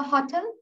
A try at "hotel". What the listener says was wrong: See, both of you are pronouncing the word hotel in the wrong way. It's hotel. Give the stress on the second syllable and do it with a plosive. It is hotel, hotel, hotel. So again, remember about the contrast. The unstressed syllables are reduced to the schwa.